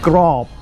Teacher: this second word is grab with a low tone